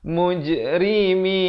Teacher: Ri dibaca nipis, jangan baca tebal. Mujrimin, itu salah.